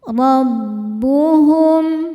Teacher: Huruf ro dibaca secara tafkhim karena rnya berharakat di atas yaitu harakat fathah. Cara membaca huruf ro ini adalah ditebalkan roahnya naik.